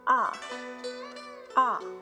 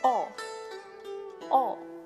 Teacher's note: the fourth tone, which is the dropping tone. It started from the highest and ended at the lowest.